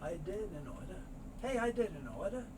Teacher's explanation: very often is spoken quickly the t sound isn't made so the n sound moves over and the are sound so soft it may not even be